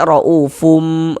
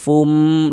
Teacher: cara membaca iqlab itu dengan cara merapatkan kedua bibir. Jadi kedua bibirnya dirapatkan. Kita baca ra'ufum, rapat, fum, tapi jangan ditekan.